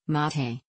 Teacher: mate in Spanish mate with the accent on the first syllable